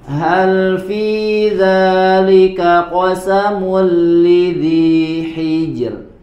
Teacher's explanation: yang sebelumnya itu berharakat kasrah nah ini juga ya termasuk ee bacaan huruf ro yang dibaca dengan tipis